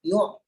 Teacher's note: Kalau kita lepaskan ke atas, jadi yu'. Tekan pada pertengahan kerongkong.